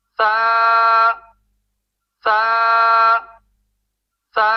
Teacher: سا کے الف مدہ میں امالہ کرنے سے بچیں گے